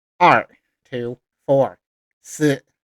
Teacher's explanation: Now we go to the falling tone, the fourth tone. They have 2 numbers, 2, 2, 4, 4.